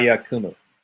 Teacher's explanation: V is pronounced U and since it's what dropped out the the vowel that remains is still an oo sound it's just the shorter oo sound